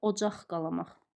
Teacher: q-dan sonra samit gəldiyi üçün tələffüzi x şəklində olacaq